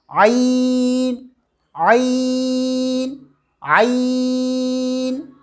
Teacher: زبان کی جڑ کو حلق کی طرف مضبوطی سے دباتے ہوئے رگڑ کھاتی ہوئی آواز، باریک آواز میں کہیں گے عین عین عین۔